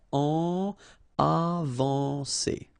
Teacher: when you combine A and N, you get the nasal en